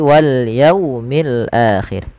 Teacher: Wal yaumil akhir, kedua-dua alif lam di sini kita baca dengan bacaan alif lam qamariyah, yaitu alif lam yang ditulis dan dibaca dengan jelas suara lamnya. Pada lafal yaumi jelaskan huruf wawunya dan didengarkan dengan bunyi u, jangan dibaca wal yaumi, yaumi dengan o, tapi wal yaumil akhir.